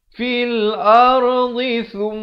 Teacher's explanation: Sa di hujung lidah ini keluarkan di antara 2 gigi. Menyentuh gigi atas.